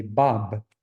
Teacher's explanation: Bob where you need bilabial closure